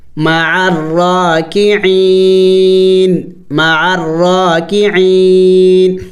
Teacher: وقف میں نون کو سائلنٹ کریں گے، یعنی اس کو ساکن کریں گے.